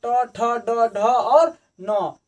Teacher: ट यानी मूर्धन्य, तो जीभ को मोड़ते हुए आगे की तरफ टच कर रहा है, तो यह हो जाएगा हमारा मूर्धन्य।